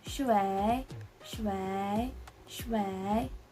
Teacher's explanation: So as you can see, it has the third tone. So we're gonna sound like our throat is going downwards.